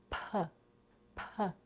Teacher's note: we aspirate it. This means that we put a little bit of air after it. P, P. If we don't do that, it can sound like the voice B to Americans and they might misunderstand the word.